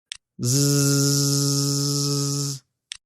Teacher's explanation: The Z is a voiced consonant, so don't forget to add your voice. Same as all the other fricatives, the Z is a continuous sound, so you should be able to stretch it out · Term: Z sound